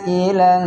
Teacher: Wa wajadaka 'ailan, di situ adalah mad wajib muttasil, yaitu ada hamzah atau mad tabi'i yang bertemu dengan hamzah di satu kata, maka hukumnya adalah mad wajib, kita baca panjang 6 harokat.